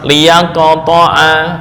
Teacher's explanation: Apabila sebelumnya berharokat fathah, contoh liyaqta'a, maka sifat qalqalahnya lebih dekat ke bunyi fathah.